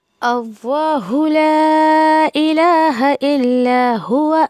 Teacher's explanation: اس کا لام جو ہے شروع میں آپ کو جو حمزہ نظر آ رہا ہے الف کی طرح، اس کو بالکل بھی آپ کو کھینچنا نہیں ہے، نہیں تو معنی بالکل الٹ ہو جائے گا. لا کو ہم کھینچیں گے کیونکہ اس میں جو ہے وہ مد منفصل ہے. حمزہ دوسرے کلمے میں آئے.